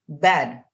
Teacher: whenever we are producing the B sound B so here our lips are touching each other